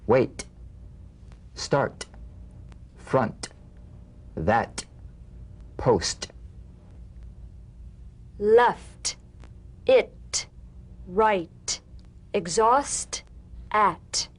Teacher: the same staccato springing action as the D drum beat with no voice forms the light tap of the T feel a gentle pulsation in the tongue now tap the drumbeat